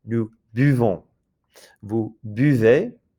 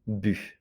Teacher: This is that very tight U sound that's like an E with your lips rounded. So it's not U, but U.